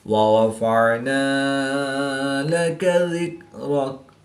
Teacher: عین حروف حلقی میں سے ہے تو اس کو حلق کے درمیان سے ادا کر کے پڑھیں گے